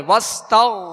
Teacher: غائن کو پر پڑھیں گے، حروف مستعلیہ میں سے ہے